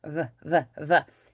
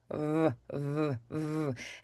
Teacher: So, we're going to overdo the lip rounding for the W and the light bite of that lower lip for that V. Vv. It's It's not really a lot of pressure.